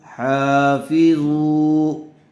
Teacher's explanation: کھڑا زبر برابر ہوتا ہے الف مدہ کے۔ حا کو تھوڑا کھینچ کر پڑھیں گے۔